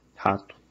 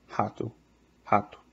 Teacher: when you have an R in the beginning of a word, is more or less an H sound.